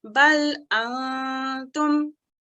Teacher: I'm making the noon sound slightly, but not completely.